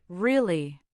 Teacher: If you say the word really in a flat monotone voice, it sounds bored and uninterested. If you say really with energy and a rising tone, it sounds excited or surprised.